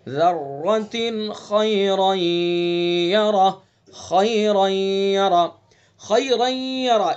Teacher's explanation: تا کے نیچے دو زیر ہیں، یہ تنوین ہے، اور اس کے بعد خا ہے تو اس کے اندر اظہار کریں گے۔ یہاں ذرتن ایسے نہیں پڑھیں گے بلکہ یہاں جلدی سے پڑھیں گے، ذرتن خیرا یرا، خیرا یرا، خیرا یرا، اس کو بھی دھیان سے پڑھنا ہے۔